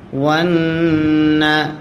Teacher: ওয়াও নুন জবর ওয়ান, নুনে যদি তাসদিদ হয় গুন্না করা ওয়াজিব হয়।